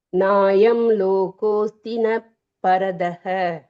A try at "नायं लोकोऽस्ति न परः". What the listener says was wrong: பரதஹ இல்ல, பரோன்னு இருக்கு இல்லையா, அந்த ரோவை அடிச்சுட்டு ரஹ போடணும், அவ்வளவுதான். லோகோஸ்தி ந பரஹ.